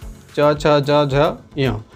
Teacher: चवर्ग जो है वह तालु से उच्चारित होने वाला है